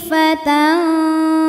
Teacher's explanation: ada hukum ikhfa Hakiki dengan tingkatan dengung ausat ikhfa ausat karena nun sukun menghadapi huruf Fa maka bunyi Nun samar-samar siap-siap menuju Fa disertai dengung dengung dan samarnya sama karena makhraj Fa ini tidak dekat tidak